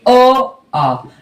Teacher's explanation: अ आ की ध्वनि कहां से आती है तो हमेशा याद रखेंगे इसका उच्चारण स्थान जो है वो कंठ है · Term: कंठ स्वर